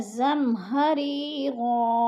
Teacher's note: زمہری غو، ہری یا ساکن سے پہلے غو کے نیچے زیر ہے تو ادھر یا مدہ ہے. یا مدہ کو 1 الف 2 حرکات کے برابر کھینچ کر پڑھنا ہے